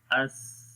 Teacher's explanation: اسمات یہ بھی سا ہمس ہے، سا کے اندر اس یعنی کہ سانس جاری ہو رہا ہے اس۔ رخاوت آواز جاری رہتی ہے اس، آواز بھی جاری ہو رہی ہے، سانس بھی جاری ہو رہا ہے